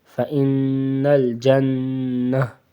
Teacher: گول تا کو وقفاً میں ہا پڑھتے ہیں اور یہ پوری تا ہے تو اس کو مکمل پڑھیں گے،